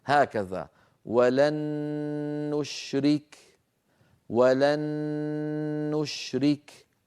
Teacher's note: فأدغمنا النون الساكنة في النون المتحركة فصار النطق بنون مشددة، والنون المشددة كما مر معنا تحتاج إلى غنة أكمل ما تكون